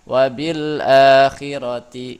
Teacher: Nah, di sini ada idhar komari karena rumusnya ada al bertemu dengan huruf hamzah. Nah, cara bacanya membunyikan lam sukun dengan jelas atau idhar